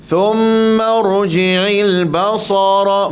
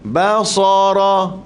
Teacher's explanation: Basara, ba lembut, sa tebal.